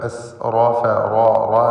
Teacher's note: മൻ അസ്റഫ ഈ പദത്തിൽ റാഇനെ പൂർണ്ണമായ തഫ്ഖീം ചെയ്ത് ഉച്ചരിക്കുക. എസ് റോഫ റോ റോ എന്ന് തടിപ്പിച്ചുകൊണ്ടുള്ള ശബ്ദം കൊടുക്കുക.